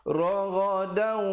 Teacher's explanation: Asalnya raghadan, tapi bila datang waw jadi raghadau, dengungkan dua harakat. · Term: idgham bi gunnah